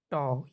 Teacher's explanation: मुर्धन्य अल्पप्राण अघोष व्यंजन वर्ण